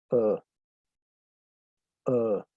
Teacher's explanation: Schwa es la forma en cómo los lingüistas denominaron un sonido vocálico, que desafortunadamente no existe en español, no lo tenemos en español. Y es un sonido muy neutro. Eh, no corresponde a la A, ni a la E, ni a la I, ni a la O, ni a la U. Es un sonido como uh, uh, ¿sí?